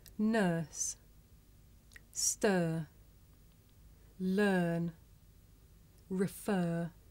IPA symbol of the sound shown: ɜː